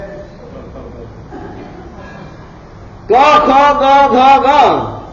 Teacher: આ પાંચ અક્ષરો જે છે એ કંઠીય છે ગળામાંથી બોલાય છે